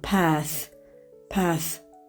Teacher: American English yəni əy ilə deyiliş. Amma Britaniya variantında path.